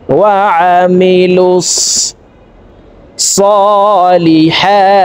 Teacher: আইন হরফকে হলকের মধ্যখান থেকে উচ্চারণ করব।